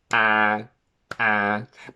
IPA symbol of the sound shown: æ